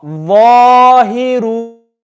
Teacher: Remember, tongue out for the dha.